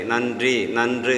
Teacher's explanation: முதல் எழுத்து ந, ந சவுண்டில் தான் ஒலிக்கின்றது, நா அல்ல.